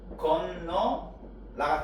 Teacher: 어 탈락은 동음 탈락이라는데 뒤에 똑같이 아어가 오면 탈락해. 근데 이 둘 중에서 어떻게 탈락하냐면 앞에 것이 탈락합니다.